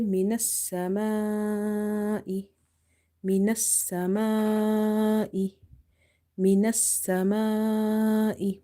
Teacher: If this situation occur, then you have here madde muttasil, attached mad, and the amount of stretching for this mad is 2.5 alif